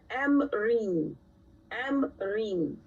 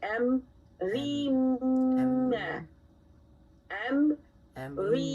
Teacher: But instead of saying amrin, we're going to blend the noon sakin sound into the meme, and we are no longer going to hear it. We're going to say amrim.